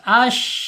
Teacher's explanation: Tapasi itu yaitu menyebar ya udaranya di dalam rongga mulut kita. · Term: tapasyi